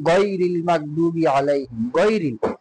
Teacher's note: 3 নম্বর মাখরাজটা হচ্ছে যে হলকের শেষ ভাগ হইতে গইন খ